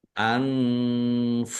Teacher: nun sukun bertemu dengan huruf fa. Bacaan ikhfa dibaca samar-samar.